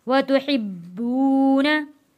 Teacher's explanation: नून ज़बर ना, वतुहिब्बूना। बा के ऊपर देखें हम थोड़ा रुके हैं, थोड़ी सी सख्ती लेके आए हैं क्योंकि बा के ऊपर तशदीद है।